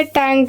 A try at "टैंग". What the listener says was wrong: टैंक नहीं होता, टैंग होता है। लास्ट में टैंग, लेकिन बोलो तो ऐसा लगता है टैंक बोला है किसी ने, है ना?